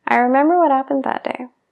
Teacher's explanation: si estoy hablando muy rápido, omito esa B porque me dificulta la pronunciación de la frase entera